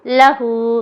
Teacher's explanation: لا کو لمبا نہیں کرنا، ہو کو کریں گے